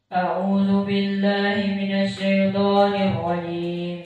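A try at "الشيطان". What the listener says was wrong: Sya-nya belum diganti dari dulu. Syaiton, syaiton.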